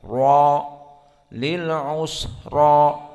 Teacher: Dan adapun ra di sini karena dia fathah, maka mufakhamah usra, dan alif yang masuk setelah ra maka mufakhamah kadzalik, maka dibaca tebal, ra lil usra.